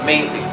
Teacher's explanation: So the stress syllable is on the second syllable.